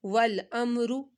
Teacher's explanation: میم ساکن کے بعد را آ رہا ہے، میم بھی نہیں آیا اور با بھی نہیں آیا، اس وجہ سے ہم نے یہاں پر گنہ نہیں کیا